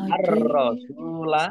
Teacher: Ar-rasulah alif lam samsiah karena tidak dibaca langsung masuk ke huruf berikutnya yaitu roh, ditandai rohnya ada tasdidnya. Rohnya dibaca dobel. Ar-rasulah sindomah wawu sukun mat tobi'i panjang dua harokat.